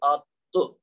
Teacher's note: اچھا آت نہیں کہنا کیونکہ تا وہ بن جائے گا, یہ ہے آتو, یعنی زبان کی نوک اوپر کے دانتوں کی جڑ سے لگی, آتو. آپ کو خود پتا چلے گا کہ زبان کی جو نوک ہے وہ آپ کے اوپر والے دانتوں کی جڑ سے لگی, تب جا کے یہ تھا آت.